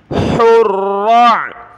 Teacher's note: ہا کو گلے سے نکالیں